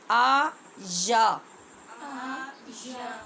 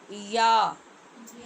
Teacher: زبان اپنے اوپر مقابل کے تالو کی طرف اٹھتی ہے تو وہاں سے ان کی آواز پیدا ہوتی ہے.